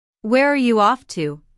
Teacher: notice the falling intonation since this is an information question not a yes no question